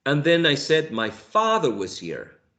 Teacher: father is a tonic syllable because it's the most prominent syllable in this tone unit or intonation phrase